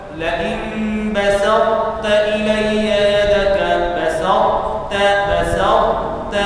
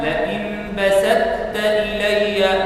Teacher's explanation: نقرأ صفة الاستعلاء وصفة الإطباق في الطاء، ثم نقرأ التاء المشددة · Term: idgham naqis